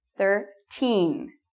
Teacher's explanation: Teen should be loud, and it should be long.